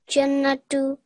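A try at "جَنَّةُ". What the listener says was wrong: Just put a little bit more stress on the noon. Jannatu.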